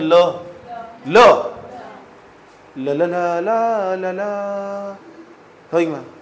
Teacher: तो ल का उच्चारण करोगे ना लंबे समय तक, तो जो वायु होगी ना वह पार्श्व यानी समांतर रूप से इधर से भी तब बाहर निकलेगी। · पार्श्विक वर्ण, ये ऐसा वर्ण हो जिसे बोलते वक्त जो हवा हो ना वो साइड से निकले, जीभ की साइड से निकलेगी